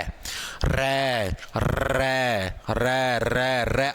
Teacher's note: आपकी जीभ कापे गी यानी कंपन होने लग र है यानी जिनको बोलने के अंदर